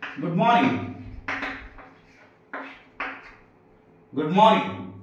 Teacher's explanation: Greetings చేస్తే కూడా rising tone ఉంటుంది.